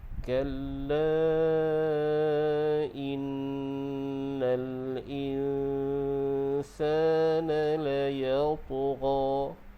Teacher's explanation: huruf ta adalah huruf qalqalah dan huruf ta adalah huruf yang tebal. Maka lantunan tu kita kena tebalkan sedikit. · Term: qalqalah sughra